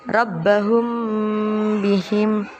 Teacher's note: Maka hukum bacaannya disebut dengan ifa syafawi. Cara membacanya dibaca samar-samar di bibir dan didengungkan.